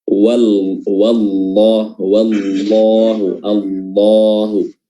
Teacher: Lafzul jalalah di huruf Allah dipertebal.